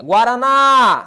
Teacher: Guaraná, sílaba tônica é a última, oxítona